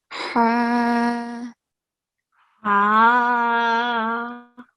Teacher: For the big ha, sound is coming from middle of the throat.